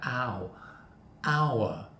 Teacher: Because it starts with a vowel sound, an ow. It's a diphthong, two sounds together, ow, hour.